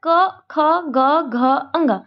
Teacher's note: स्पर्श व्यंजनों का उच्चारण स्थान क्या होता है, कंठ।